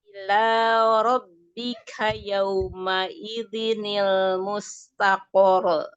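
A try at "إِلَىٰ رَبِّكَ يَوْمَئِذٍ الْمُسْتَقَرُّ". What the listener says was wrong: Kenapa mustaqor? Kenapa memantul? Nggak ada sifat qalqalah. Mustaqor. Roknya tasdid dinaber. Mustaqor. Ketika waqaf pada huruf yang bertasdid itu dinaber. Kecuali kalau huruf yang bertasdid di akhirnya ya atau yang diwakafkannya itu adalah huruf-huruf yang punya sifat qalqalah. Yang qutobu jaddin ya.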